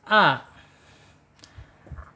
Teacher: Huruf alif ya, makhrajnya ingat ada di al-khalq. Ya, ada di tenggorokan.